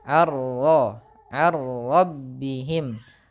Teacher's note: Innahum ar-rabbihim, an ketemu dengan ra, masukkan ra langsung. Ar-rabbihim, a tipis, ra-nya tebal.